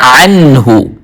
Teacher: حمزہ کے ساتھ نہیں بلکہ عین کی آواز کو ظاہر کر کے. عنہ نون کے اوپر غنہ نہیں کرنا, اظہار کرنا ہے.